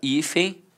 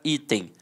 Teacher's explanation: ambas são paroxítonas terminadas com som de e ambas começam com som de i. Então, prosodicamente elas são muito parecidas.